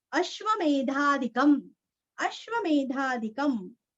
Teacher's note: अनुस्वार का उच्चारण आधा म